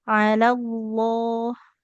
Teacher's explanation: Lam di lafadz Allahnya tebal.